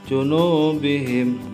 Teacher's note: Junubihim matobi'i domah diikuti huruf wawu mati atau dipanjangkan 2 harokat.